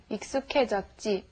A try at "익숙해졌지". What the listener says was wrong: But be sure to say K instead of he.